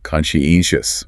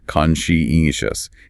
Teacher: Stress is way over on the third syllable.